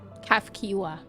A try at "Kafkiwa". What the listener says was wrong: Kafkiwa, not Kakiwa. Kafkiwa.